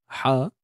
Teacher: Ha pedas, sempit tengah kerongkong.